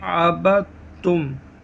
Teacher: دال کو چھوڑ دیں گے، با کو تا سے ملا کر پڑھیں گے، عبدتم۔ اس سبق میں تشدید کی مشق کے ساتھ ساتھ حروف قریب الصوت یعنی ملتی جلتی آواز والے حروف میں واضح فرق کریں۔